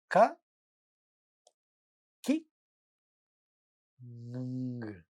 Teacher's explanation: This is a velar nasal sound.